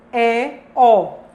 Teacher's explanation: Terceiro, média baixa. E a mandíbula está meio aberta.